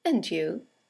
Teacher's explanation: it has a falling intonation and it's used to return the compliment or the greeting